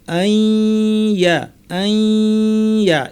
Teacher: এখানে ইয়া এসেছে, গুন্না সহ ইদগাম করতে হবে, অর্থাৎ আমরা আন ইয়া যুক্ত করে পড়ব আইয়া, কিন্তু এর প্রথম অংশে গুন্না করব, আই নাক থেকে গুন্না করে ইয়া বলার সময় গুন্না শেষ, আইয়া আইয়া এভাবে পড়বো।